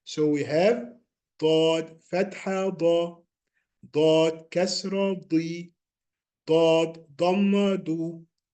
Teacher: The side of the tongue rises up to touch the gums of upper back teeth.